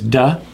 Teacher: It's the tip of the tongue touching the alveolar ridge, and it's light and quick.